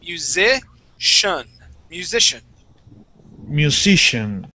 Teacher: so instead of pronouncing that that c and saying musician okay that c i is actually gonna make an sh sound